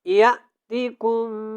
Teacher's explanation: ام حسبتم ان تدخلوا الجنة ولما یأتکم یہاں پہ ہم نے غنہ کرنا ہے، کیونکہ یہاں پہ میم کے اوپر شد ہے، اور یہاں پہ حمزہ جب ہم ادا کریں گے تو یہاں پہ جھٹکا ہوگا، کیونکہ حمزہ جو ہے یہاں پہ ساکن ہے